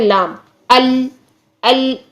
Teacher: زبان جو ہے وہ دانتوں کے ساتھ جا کے ٹچ ہو گئی، آواز جو ہے وہ رک گئی، تو اس کا مطلب ہے کہ یہ بھی مخرج محقق ہے۔